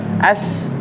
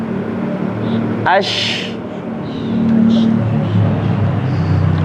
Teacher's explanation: Tapasyi itu menyebarkan angin di dalam mulut. Jadi ash. Nah, sebarkan angin dalam mulut itu.